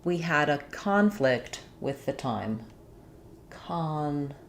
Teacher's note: But in the first sentence, the word is being used as a noun. So when we say this word as a noun, we stress on the first syllable.